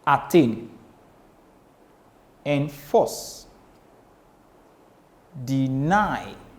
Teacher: you have one unstressed syllable followed by one stressed syllable